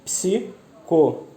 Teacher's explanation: A tonicidade está no ló, né? Que é a antepenúltima sílaba. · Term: proparoxítona